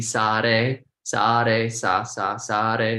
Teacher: we flick the tongue onto the roof of the mouth like a hard R or a rolling R